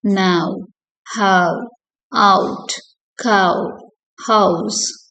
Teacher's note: the diphthong ow starts with a low back vowel and glides to a high back rounded vowel. low back vowel இருந்து high back போகுது.